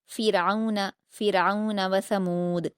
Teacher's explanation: را پر جزم ہے تو اس سے پہلے زیر ہونے کی وجہ سے باریک پڑھیں گے